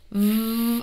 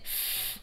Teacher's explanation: And you can actually test this out right now by touching your throat as you say v, which is a voiced consonant, and f, which is a voiceless consonant